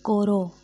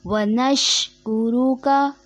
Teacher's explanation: کاف پہ پیش، رو پہ پیش، جس کو مجہول پڑھ دیا جاتا ہے